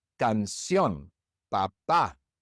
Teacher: And so normally we would stress the second to last syllable. But in each of these words, we stress the last syllable